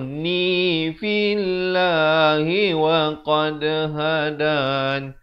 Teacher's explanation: Ujungnya baru masuk nun. Dan bila masuk nun, dengungkan 2 harakat. Jangan baca juni.